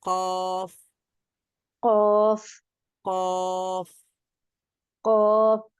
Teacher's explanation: দিকে ধাক্কা দিতে হবে হ্যাঁ হ্যাঁ তালুর সাথে যুক্ত করতে হবে জিহ্বার গোড়াটা উপরের তালুর সাথে মিলিয়ে আমরা কফ উচ্চারণ করতে পারি · উপরের তালুর সঙ্গে লাগিয়ে এই যে জিহ্বার গোড়াটা আছে এখানে দেখেন জিহ্বার গোড়া তার বরাবর উপরের তালুর সঙ্গে যুক্ত হবে এটা হলো জিহ্বার গোড়া এবং এটা উপরের তালুর সঙ্গে যুক্ত হয়ে কফ উচ্চারিত হবে বলেন কফ কফ কফ কফ হ্যাঁ তাহলে আমাদের মাখরাজ মোটামুটি হয়ে